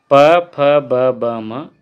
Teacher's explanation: ये होठों से बोले जा रहे हैं